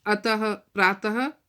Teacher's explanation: ह बोलना होता है हमें मुंह से, है ना, विसर्गों का उच्चारण करते हुए